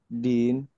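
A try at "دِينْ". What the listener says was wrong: Panjang jadinya. Din gitu. Karena jadi mad arid disukun.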